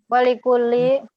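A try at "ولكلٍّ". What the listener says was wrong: Walikullin. Walikullin. Bertanwin ya. Walikullin.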